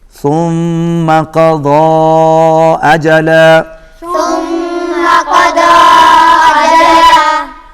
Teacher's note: ضاد کے اوپر چھوٹی مد ہے، اس کو کھینچ کے پڑھیں گے۔